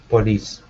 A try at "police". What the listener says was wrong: Instead of police, it's police. Like this. Police. Good. Yeah, don't emphasize that O so much. Police.